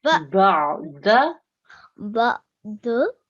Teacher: ain comes to the middle of your throat, okay? It's a nice smooth sound.